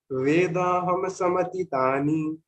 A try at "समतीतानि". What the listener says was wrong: Samtitani. Why Samtitani? Samatitani. Samatitani. Ti. Ti. What is dirgha? What is rasva? What is half? What is full? See what happened when you said samtitani.